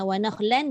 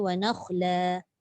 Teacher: Ini kaedah kita nak kena tahu. Bila wasal dia bunyikan fathatain, bila waqaf dia bunyikan fathah.